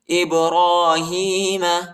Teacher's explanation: وَإِذِ ابْتَلَى إِبْرَاهِيمَ، حمزہ کو با کے ساتھ ملائیں گے، قلقلہ بھی کریں گے، اور را پر کھڑا زبر آیا ہے اور ہا پر کھڑی زیر آیا ہے، ان دونوں حرفوں کو ایک الف کی مقدار تک کھینچیں گے